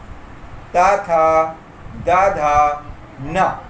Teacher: ये पंक्ति दंतव्य है, दंत से इसका उच्चारण है, इसलिए दंतव्य ये पंक्ति है।